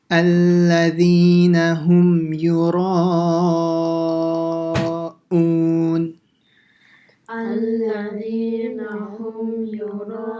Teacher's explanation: So it has to be a very sharp sound. Hamza is like, he has a sound right from the bottom of the throat